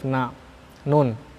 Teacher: Makhrajnya yakni ujung lidah bertemu ya arah gusi gigi atas. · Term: makhraj nun